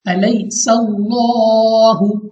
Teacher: तो यहाँ पे हमारे पास लाम ऑफ अल्लाह से पहले जबर है, तो हमने यहाँ पे भी लाम ऑफ अल्लाह को पुर पढ़ना है, यानी मोटा मुंह और आवाज को खोलकर